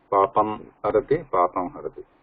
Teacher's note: So ma is oshta plus nasika. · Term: anunasika